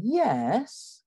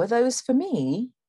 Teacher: a feature of english intonation that you don't get so much in american english is called the full rise